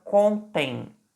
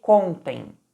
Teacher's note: reparem que eu pronunciei contem com a sílaba tônica no com